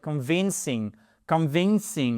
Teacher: Voyez, vous avez votre 2e syllabe qui est accentuée. En phonétique, quand vous avez cet apostrophe, c'est la syllabe qui est derrière qui est accentuée. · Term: syllabe accentuée